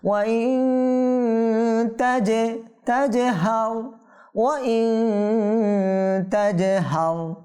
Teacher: জিমে কি হবে? কলকলা হবে, কম্পন হবে, প্রতিধ্বনি হবে।